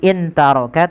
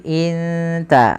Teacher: Sehingga di sini teman-teman bacanya bukan lagi intaroka tapi inta, langsung samarkan kepada makhraj daripada huruf ta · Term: ikhfa